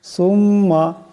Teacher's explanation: মিম মুশাদ্দাদকে একালে পরিমাণ গুণা করিয়া পড়তে হবে